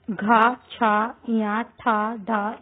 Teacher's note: महाप्राण में व्यंजन के उच्चारण में निकलने वाली वायु की मात्रा अपेक्षाकृत अधिक होती है